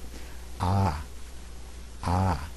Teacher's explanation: it's considered the most open Sound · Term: open V